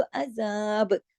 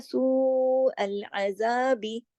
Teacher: फिर देखिए सू अल अजाब, अगर रुकते हैं तो अजाब, अगर रुकते हैं तो बा की हरकत को रोक देते हैं तो क्या होता है, बा पे कलकला, ठीक है, और अगर मिला के पढ़ते हैं तो फिर कलकला नहीं होता, सू अल अजाबी, ठीक है।